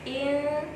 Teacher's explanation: Kenapa ikhfa? Karena ada nun sukun, sesudahnya ada sin. Maka membacanya harus didengungkan, ya.